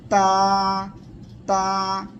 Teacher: করবেন কিভাবে তাওখর এর মাখরাজ হলো আগা আমার দিকে খেয়াল করেন জিহ্বার আগা সামনের উপরে এই যে দুইটা দাঁত এই দুই দাঁতের গোড়ায় আপনি জিহ্বার আগাটা লাগাবেন লাগিয়ে শক্ত করে উচ্চারণ করবেন